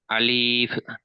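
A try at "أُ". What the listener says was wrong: এখানে আপনি আলিফ বলছেন আলিফ বলছেন এখানে কি আলিফ পড়ানো হলো হামজা জবর আ জবার না আপনাকে পেশ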